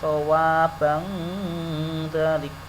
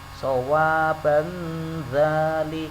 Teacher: ketika membaca tanwin di sini sudah persiapan masuk ke dzal.